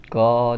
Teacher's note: क का जो उच्चारण स्थान होता है ना वो आपका कंठ होता है, क देखिए बोलेंगे तो आपके कंठ से आएगा वो।